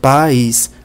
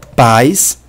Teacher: as vogais são pronunciadas separadas são duas vogais separadas · Pais, pela pronúncia eu vejo que estão pronunciados juntos. Tanto o A quanto o I são pronunciados na mesma sílaba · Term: iato, ditongo decrescente, hiato